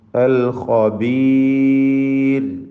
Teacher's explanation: തൊട്ടു മുമ്പിൽ സാക്കിനായ യാവുമുണ്ട്. റായിനെ തർക്കീഖ് ചെയ്യണം, നേർപ്പിച്ചുച്ചരിക്കണം. ര എന്ന ശബ്ദം, രായുടെ മലയാളത്തിലെ രായുടെ ശബ്ദം നൽകണം.